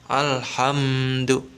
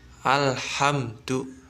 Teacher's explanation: Jadi pada lafadz alhamdu itu harus dibaca idhar atau jelas.